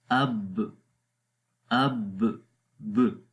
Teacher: قلقلہ کریں گے تو وہ جو دباؤ ہمیں محسوس ہوتا ہے اب کے اوپر، وہ ختم ہو جائے گا